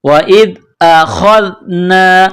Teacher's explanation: خا کو موٹا کرنا ہے، خا کو ذال کے ساتھ پلس کرنا ہے